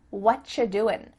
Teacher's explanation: you doing we could reduce this to say what you're doing it sounds like a CH sound here and actually we've cut out completely the word are